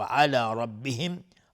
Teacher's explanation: را تفخیم هست چون فتحه داره